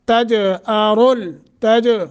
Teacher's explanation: तज जीम साकिन है, कलकला करना है